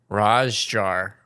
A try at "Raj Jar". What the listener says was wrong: No, not jar. I think like the Middle Eastern, like... Like jar or jar. Like almost it makes an R sound again, I think.